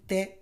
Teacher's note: त त जब हम बोलेंगे त तो जो हमारे जीव है उसका अगला जो भाग है वो कहां लग रहा है दांत पे लग रहा है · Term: दंत वर्ण